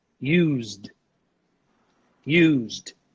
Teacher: There's a vibration here. So this sound is voiced, okay? We should pronounce it as a D.